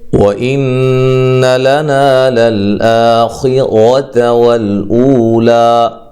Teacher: نون مشدد پہ غنہ ضروری ہے، لا نا الف مدہ ہے، للآ مد اصلی ہے، ٹھیک ہے، خیرۃ خا کو موٹا، تا کو لمبا نہیں کرنا، را کو موٹا پڑھنا ہے، ٹھیک ہے، والأولی لام کو ہلانا نہیں ہے، او و مدہ ہے، لا مد اصلی ہے۔